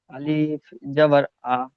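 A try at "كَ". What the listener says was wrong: এখানে আলিফ নেই, কাফ জবর কা।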